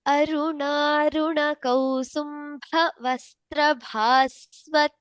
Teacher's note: ಸೋ all the ಭಕಾರಸ್ ಆರ್ ಮಹಾಪ್ರಾಣಸ್